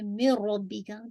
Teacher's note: तो ये आपका क्या है, इदगाम है, इदगाम कंप्लीट है, यानी कामिल इदगाम है विदाउट गन्ना। और रब्बी का रॉ हैवी रखिएगा, बा को लाइट रखिएगा